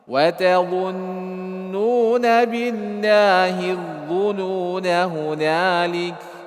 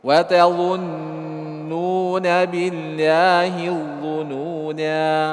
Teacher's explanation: Jadi ketika wasal tuhdaf, dihilangkan alifnya. Wa tathbutu waqfan, menetapkan ketika kita berhenti di situ.